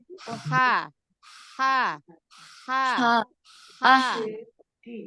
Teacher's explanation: huruf Ain dia lebih turun makhrajnya dibanding huruf ha kalau Ha dia lebih ke atas